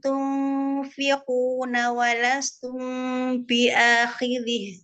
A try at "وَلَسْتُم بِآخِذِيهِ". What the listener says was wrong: Oh, ada mat. Biakhidhi. Atadid li sukun.